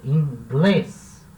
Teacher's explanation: inglês é uma palavra oxítona, ou seja, a sílaba tônica é a última e termina em S.